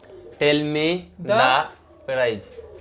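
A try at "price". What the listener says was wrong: হ্যাঁ এটা হবে প্রাইস মানে হচ্ছে দাম তাই না এখানেও একটি ঘটনা সেটা হচ্ছে এটা মানে ছোট থেকে না প্র্যাকটিস করার কারণে এই যুক্তাক্ষরটা ভুল থেকে গেছে সো এখন এই মুহূর্তে আমরা আসলাম সাহেবের কাছে সেটা শুনলাম এবং তাকে আমরা সঠিক করার চেষ্টা করব তাহলে কি হবে প্রাইস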